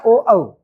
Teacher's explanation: कंठ और ओष्ठ के द्वारा आवाज आ रही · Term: कंठ ओष्ठ